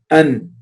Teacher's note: It is at the top of the teeth, just on the gums. So the noon is articulated from the tip of the tongue, taraful lisan, and what is parallel to the upper gum, just above the teeth of the upper two incisors. And it is just a little far from the articulation point of lam.